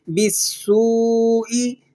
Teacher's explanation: حروف صفیریہ میں سے ہے یہ، تو یہاں پر سیٹی کی سی آواز نکلے گی